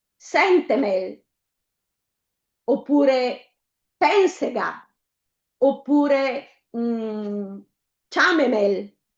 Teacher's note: Abbiamo poi delle parole sdrucciole. L'accento tonico cade sulla terzultima sillaba